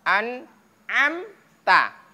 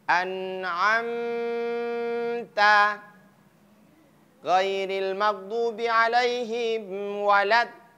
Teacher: Ta. Ingat ketika dia izhar, maka mimnya tidak boleh dilamakan atau didengungkan.